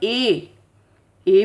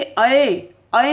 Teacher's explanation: ए में तो मुख थोड़ा सा खुला है, लेकिन जब बोलेंगे अए में ए से ज़्यादा खुल जाएगा मुख